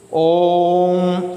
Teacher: ओम ऐसे करेंगे ना। ओ जो है, ओ के ऊपर ज़्यादा जोर पड़ रहा है, ज़्यादा समय लग रहा है ओ के उच्चारण में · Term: प्लुत स्वर